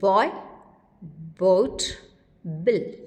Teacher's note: B is partially devoiced when it occurs initially, that is, vocal cords vibrate in the release stage of articulation.